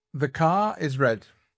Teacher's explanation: c'est un R dit non rotique